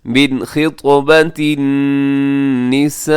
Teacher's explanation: غنہ نہیں ہوگا، تیزی سے پڑھ دیں گے، من خطبۃ النساء، یہاں پہ جو مد ہے اسے مد متصل کہا جاتا ہے، 4 سیکنڈ تک لمبا کیجیے گا